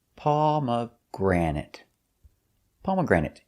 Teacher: Stress is on the first, pomegranate, and third syllable.